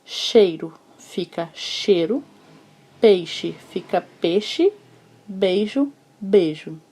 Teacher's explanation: os ditongos ei ou por influência africana reduziram-se na língua popular do brasil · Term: redução